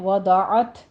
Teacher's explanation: وضعت یہاں پہ آپ ساکن کر رہے ہیں، تا پہ ہمس ہوگی